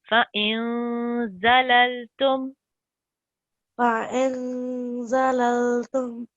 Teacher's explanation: Yeah, so in this instance, we're supposed to do ikhfa, which is a light nasal sound, and we're supposed to hold it for 2 seconds